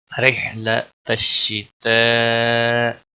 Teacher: حروف مد کے بعد حمزہ اسی کلمے میں آیا ہے، گویا یہاں پر مد متصل لگی ہے، 5 الف کے برابر اس کو کھینچنا ہے۔